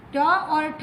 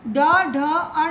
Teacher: ट और ठ है वह है अघोष, ड, ढ, अण है वह है सघोष